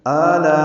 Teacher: آلا میں آ میں مد بدل ہے، یہ 2 حرکات لمبا ہے